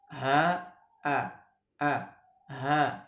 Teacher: huruf ha ini dengan terbukanya kedua pita suara